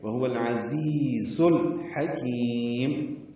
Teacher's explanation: لام ساکن پہ اظہار، عین اور ہا دونوں حروف قمری میں سے ہیں اس لیے اظہار قمری ہوگا. حکیم، ہا وسط الگ سے ادا کریں گے.